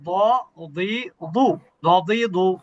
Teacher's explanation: এমনি সাধারণ নিয়ম হচ্ছে জিহ্বার কিনারা, জিহ্বার কিনারা মাড়ির দাঁতের সাথে স্পর্শ করবে। তবে কেউ কেউ বলে দুই পাশের কিনারা স্পর্শ করলে ভালো হয়, কেউ বলে বাম পাশের কিনারা ভালো হয়।